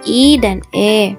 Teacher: vokal tak bundar karena membentuk mulut tidak membundar melainkan lebar ketika mengucapkan misalnya vokal i&e Adapun 10